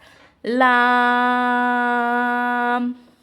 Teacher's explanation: لام کا جو ہے مخرج زبان کا کنارہ اور اوپر کے سامنے والے 8 دانتوں کے مسوڑوں سے ادا ہوتا ہے